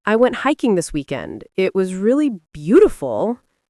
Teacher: The rising tone on beautiful invites the other person to chime in. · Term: up-talk inflection